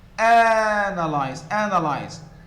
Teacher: so the first syllable is the stress one and so it is louder it is higher it is longer